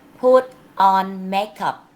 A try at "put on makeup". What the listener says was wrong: Can you make the sound T? Can you make the sound T clearer? Put on makeup.